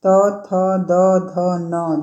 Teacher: न का उच्चारण स्थान दंत है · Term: दंत उच्चारण